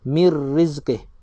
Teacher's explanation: Dia kena memasukkan kepada huruf ra tanpa kita dengungkan dia. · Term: idgham bila ghunnah